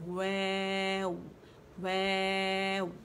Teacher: واو نہیں پڑھیں گے, یعنی لپس کے ساتھ ہمارے دانت نہیں لگیں گے, فارورڈ پش کریں گے فرنٹ میں, ٹھیک ہے. ویو ویو, گولائی سے ویو ویو, ٹھیک ہے.